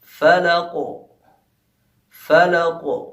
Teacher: ایسا لگ رہا ہے کہ کاف جو ہے ہلکا سے 2 بار پڑھا جا رہا ہے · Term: قلقلہ کبریٰ